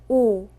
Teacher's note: 오는 입술을 동그랗게 만들고 소리를냅니다